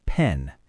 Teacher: The N sound is voiced. Your throat vibrates on an N.